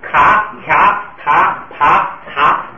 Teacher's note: 就是第3竖行送气，卡、卡、塔、爬、查都是送气的 。如果在第2音节出现了这5个字母，它要变成什么呢？变成不送气。为什么要变成不送气呢？就是这个送气啊，如果在第2音节送出来非常困难。你要第1音节说秋或者是卡，你第1音节，因为你做好口型，刚开始好送。你刚发了一个音，接着发一个音，还要做口型，还要送气，就很费劲。所以呢，第2音节的送气呢，都就不送气了。还有一个，第2音节刚才说了，第2音节的这个低声